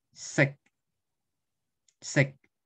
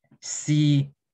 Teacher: as opposed to c in the first tone the seventh one is shorter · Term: seventh tone